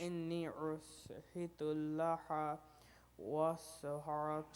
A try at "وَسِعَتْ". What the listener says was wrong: سین نہیں ہے نا شین ہے.